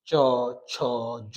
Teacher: চ বর্গের যে বর্ণগুলি রয়েছে এগুলি আপনি যদি উচ্চারণ করেন দেখবেন জিহ্বাটা তালুতে লেগে গেছে।